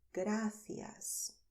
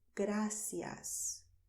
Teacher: generally in Spain, we do lisp when we say gracias. But if you go to the Spanish-speaking countries in Latin America, people do not lisp. So there people will say gracias.